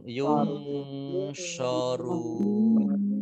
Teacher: Samar-samar itu tidak eng ya, tapi samar-samar antara n dan eng. Antara n yung sorun.